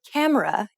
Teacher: when you say camera in English you put stress on C and say it for longer than the other syllables of the word